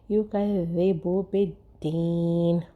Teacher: یکذب بالدین، شدہ ہے، اس کی سختی کا خیال رکھیں گے۔ یکذب، یکذا جو ہے وہ اس طرح سے پڑھیں گے کہ زبان جو ہے ہمارے دونوں دانتوں کے بیچ میں آئے گی، لیکن شدہ کی مضبوطی کا مطلب یہ نہیں کہ زا کو بھی ہم جو ہے وہ تیزی سے پڑھیں یا مضبوط پڑھیں۔